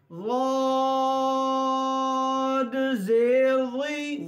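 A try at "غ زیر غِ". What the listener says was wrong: دونوں میں وقف نہیں کرنا. دوبارہ.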